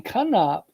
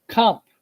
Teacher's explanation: in Acadian they combined it into a single syllable so instead of saying come up they said comp like k-a-n-p